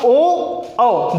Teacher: अगर हम बात करें इसकी, इन दोनों की बात करें, देखो कंठ प्लस ओठ, कंठोष्ठ, यहाँ पे कंठ और ओष्ठ दोनों का मिश्रित आवाज आ रही है